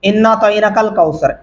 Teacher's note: انا آپ نے نون کو لمبا نہیں کیا، اعطیناک نون کو اس والے کو لمبا نہیں کیا آپ نے، اور اعطینا آپ نے الف پڑھا عین نہیں پڑھا، بلکہ دو سے بھی تین غلطیاں ہو چکی ہیں اس آیت کے اوپر۔